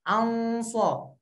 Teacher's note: Ikhfanya pun ikutan tebal seiring hurufnya tebal. Dan posisikan lidah kita di tempat di mana kita ingin mengeluarkan huruf tersebut. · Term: ikhfa tebal